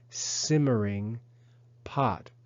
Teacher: the verb simmer has an accent on the first syllable not on the last syllable so the consonant at the end of the verb the r